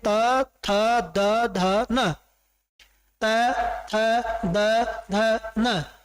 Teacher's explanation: बोलते समय देख सकते हैं कि हमारी जो जीभ है वो किसको स्पर्श करती है, दांतों को सीधा स्पर्श करती है जाकर के, इसलिए क्या होती है ये हमारे ये दंत्य वर्ण होते हैं, ये दंत्य ध्वनियां होती हैं पांचों।